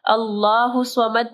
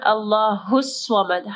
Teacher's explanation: اللہ الصمد نہیں پڑھنا، اللہ الصمد. ہا کو جو ہے صاد کے ساتھ جوائن کرنا ہے